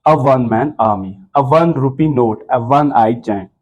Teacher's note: यहाँ पे जो ओ है ये डब्ल्यू की आवाज देता है